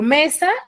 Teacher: mesa tiene la mayor fuerza de voz en la penúltima sílaba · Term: grave